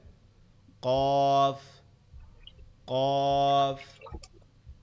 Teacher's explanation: জিহ্বার গোড়া তার সোজা উপরের তালুর সঙ্গে। জিহ্বার গোড়া তার বরাবর বলতে তার সোজা উপরে তালুর সঙ্গে লাগবে, লেগে উচ্চারিত হবে